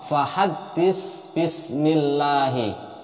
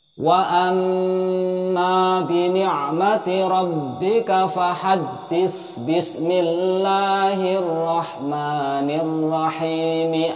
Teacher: maka tidak boleh masuk atau idgham ke ba, tetapi tetap dibaca jelas atau izhar.